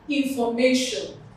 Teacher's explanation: the stress of course will fall in the penultimate syllable